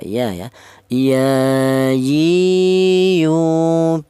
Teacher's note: Huruf fa juga sudah bernya huruf berasal dari ujung eh berasal dari bibir bawah bagian dalam menyentuh ujung gigi seri atas ya fa huruf ya. Huruf ya ini keluarnya huruf berasal dari tengah lidah ya.